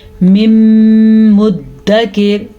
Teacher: مدکر دال پہ بھی شد ہے، میم پہ بھی شد ہے، تو دونوں کو ادا کرنا ہے